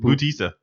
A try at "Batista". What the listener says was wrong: Batista? Dave Batista. You're saying Bautista. A boo, boo and buh.